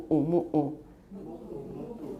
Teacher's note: It's M-U, glottal stop U, M-U, glottal stop U. It's reduplicated. So mu'u. That is actually a phoneme in Hawaiian.